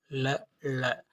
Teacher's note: ல, ள இவற்றை உச்சரிக்கும் போது நுனிநாக்கு மேல்நோக்கி வளைந்து நடு அன்னத்தை தொட காற்று நாவின் இரண்டு மருங்காலும் வெளியேறுவதால் இவற்றை மருங்கொலிகள் என்பர்.